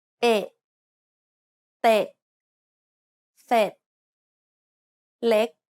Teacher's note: This is a short E sound, like the E in neck.